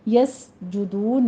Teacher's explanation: سین پر سیٹی کی آواز ہوگی، ہمس پیدا ہوگا